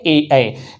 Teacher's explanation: कंठ तालु मतलब ये कंठ और ये तालु दोनों को संयुक्त रूप से मिलाकर जिसके बोलने में प्रयोग होता है वो होता है ए ऐ